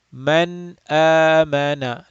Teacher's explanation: We do not stretch the nasal sound. We make the Noon sound clear and short. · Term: Izhar Halaqi